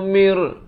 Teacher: daripada min jadi mir, terus masuk tanpa dengung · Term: idgham bila gunnah